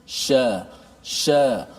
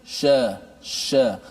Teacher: bila kita menyebut Shin, makhrajnya di tengah lidah, mulut kita ini akan bergerak sedikit